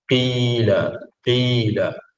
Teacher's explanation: yang paling bawah iaitu berbaris bawah berbaris bawah seperti Qila Qila walaupun baris bawah kerana sifat asal huruf tersebut ialah huruf istilak maka ketebalan tu tetap ada walaupun huruf tersebut baris bawah